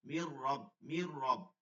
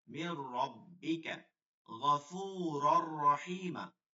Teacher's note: ইদগম বেলাগুনা হরফ দুইটা, ওয়ালাম নুন সাকিন তানবিনের বামে, ইদগমে বেলাগুনার হরফ আসিলে ওই নুন সাকিন বা তানবিনকে গুন্না ছাড়া মিলাই পড়তে হবে, মানে দুই শব্দকে মিলাই পড়তে হবে তাসদীদ দিয়ে, গুন্না ছাড়া, কোনো গুন্না করা যাবে না।